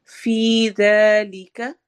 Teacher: فی میں یا مدہ ہے اور ذال کو نرمی سے پڑھیں گے